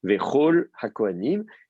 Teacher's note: comme le kaf est précédé d'une voyelle, on a la bouche ouverte, il reste fricatif, on ne lui met pas de dagage.